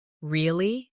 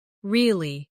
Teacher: Say, Really? with a rising tone to show surprise. Now say, Really. with a falling tone to show you don't believe someone.